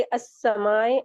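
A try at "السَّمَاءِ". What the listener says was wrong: समा, नहीं ए क्यों, ए नहीं पकड़ेंगे, आप स्टॉप करेंगे जहाँ पे, जज्म लगा के झटका दे के वहां पे रुक जाएंगे।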